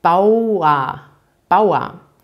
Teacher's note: wie ausgesprochen bauen und am ende habt ihr das er aber dass er wird hier wieder nicht betont also es ist eigentlich wie ein a